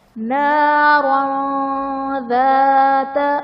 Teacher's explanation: نارا میں دو زبر کی تنوین کے بعد حروف اخفاء میں سے ذال ہے تو یہاں پر ہم اخفاء کا غنہ کریں گے